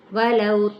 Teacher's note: واو ہونٹوں کی ناتمام گلائی کے ساتھ، لو پہ واو لین کا قاعدہ